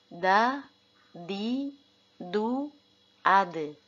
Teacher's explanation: huruf Dal juga ketika berharakat sukun harus dibaca mantul · ujung lidah menempel pada gusi atas